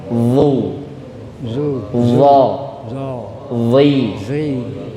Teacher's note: Ketika kasrah otomatis akan ada ayunan zi. Ya, karena tengah lidahnya naik.